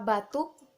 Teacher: bunyi U agak tinggi, berada di belakang, dan berbentuk bulat